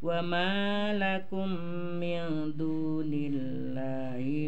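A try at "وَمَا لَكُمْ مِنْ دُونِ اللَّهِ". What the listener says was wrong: Wa ma panjang.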